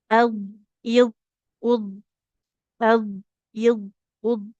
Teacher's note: Nah, dia baik huruf d maupun huruf rnya harus sempurna dalam pengucapannya dan suaranya dia harus mengalir ya. Enggak boleh dipantulkan huruf dnya karena d bukan termasuk dari huruf qalqalah ya